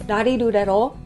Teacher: It's like halfway between an R and an L, and kind of like a D in there a little bit sometimes too. Yeah, like when we pronounce rarirurero, the tip of your tongue touches the back of your higher teeth.